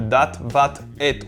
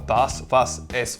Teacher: sépare les dialectes qui ont maintenu le son /t/ au final de ceux qui l'on fait évoluer en /s/